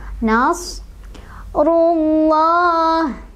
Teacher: sadnya punya sifat sofir. Sofir itu artinya ada desisan